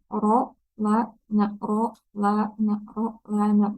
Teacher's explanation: Berarti ro paling dalam, bagian tengah ada lam, bagian ujungnya itu ada nun